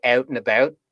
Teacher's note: there's like a split in that diphthong which is really weird because i don't think any other accent splits that vowel in the same way